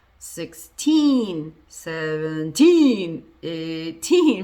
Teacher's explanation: the part that's not stressed, you can use a schwa · Use the schwa and make sure that the teen part is louder and longer